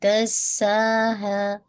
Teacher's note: सीन पे whistle sound होगी